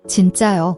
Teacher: The N is a tensed consonant. It's a sharp, strong J sound, like the J in jump but without aspiration. Also, remember to raise your intonation at the end for a clear question.